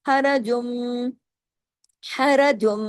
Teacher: र की आवाज को यहां बढ़ावा नहीं देना आ की आवाज बीच में नहीं लगानी